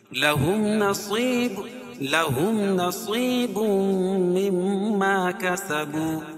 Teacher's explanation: میم ساکن کے بعد میم اور با کے علاوہ کوئی اور حرف آئے تو اظہار شفوی یعنی اس کو ظاہر کر کے پڑھیں گے، اس میں غنہ نہیں کریں گے